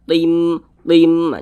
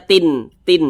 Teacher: cara membacanya dengan cara memasukkan kemudian disertai dengungan apanya dimasukkan nah bunyi tanwinnya ini kita baca tim tim Jangan dibaca Tin Tin jangan tapi dimasukkan menjadi m tim nah begitu didengungkan tim nah begitu didengungkan suaranya itu kita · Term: idgham bhunah